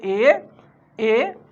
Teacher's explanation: উচ্চ মধ্য সম্মুখ স্বরধ্বনি হচ্ছে এ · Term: নিম্ন মধ্য সম্মুখ স্বরধ্বনি